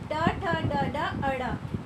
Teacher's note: ये हमारे मूर्धा को मतलब मुख के ऊपर वाली छत को स्पर्श करती हुई बाहर आती हैं